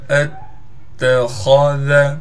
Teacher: حمزہ کو تا سے ملائیں گے، اس لیے کہ تا پر تشدید ہے، تا پر تشدید ہونے کی وجہ سے تھوڑا ٹھہراؤ بھی کریں گے اور خا کو موٹا کر کے پڑھنا ہے، ذال کو باریک پڑھیں گے